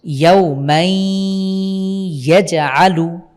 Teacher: নুন সাকিন অথবা তানভিনের পরে ইয়া, মিম, ওয়াও, নুন আসলে গুন্না সহকারে মিলিয়ে পড়ব। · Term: ইদগাম বিল গুন্না